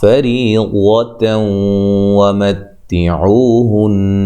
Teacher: نون مشدد پہ غنہ ضروری ہے، وقف کی صورت میں بھی غنہ برقرار رہے گا · فری، را کو باریک، یا مدہ ہے، وہ جب وقف کریں گے تو یا گولتا کو ہا میں تبدیل کر دیں گے، ہائے ساکنہ میں۔ اگر ہم ملا کے پڑھتے ہیں تو یہ نون تنوین کا ادغام مع الغنہ ہوگا